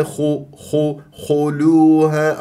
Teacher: الخاء مفخمه مرتبه ثالثه لانها مضمومه ضم الشفاء فيها